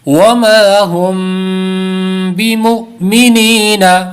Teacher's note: یہاں پر دیکھیں حمزہ ساکنہ ہے اس لیے جھٹکا دے کر پڑھیں گے